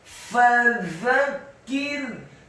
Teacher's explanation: Kata fadzakir, fa-nya dibaca fathah satu harokat, membaca huruf fa, gigi seri atas kita ditempelkan dengan bibir bawah. Fadzakir. Kemudian za-nya dibaca tipis, tarqiq, lidahnya agak keluar sedikit, fathah satu harokat.